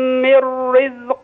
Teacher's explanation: راء من رزق ترقق